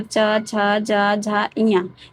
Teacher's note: इनके उच्चारण में वायु मुख के अवयवों को स्पर्श करते हुए घर्षण के साथ बाहर निकलती है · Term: स्पर्श संघर्षी व्यंजन